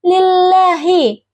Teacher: huruf lam makhrajnya itu di atas gigi seri atas. Kesalahan yang sering terjadi itu seperti pengucapan lam yang tidak menempel gigi sehingga terdengarahi.